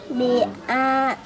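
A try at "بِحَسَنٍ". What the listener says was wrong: Biha. Ini biha, ini ha bukan a. Bihasanin.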